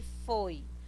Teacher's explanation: O foi, ele não tem acento, mas ele tá com o O, tá com a vogal aberta.